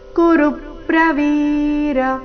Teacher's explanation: ದೃಷ್ಟನ್ ತ್ವದನ್ಯೇನ ಕುರು ಪ್ರವೀರ ಕುರು ಕುರು ಎರಡು ರಸ್ವ ಋ ಮೇಲೆ ಆಘಾತ ಪ್ರವೀರ ವಿ ದೀರ್ಘ ಕೊನೆಗೆ ರ ರಸ್ವ